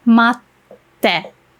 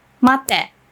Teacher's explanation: you want to kind of put a tiny pause between ma and te, because if you say mate, this is actually a rude way to say wait. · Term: small tsu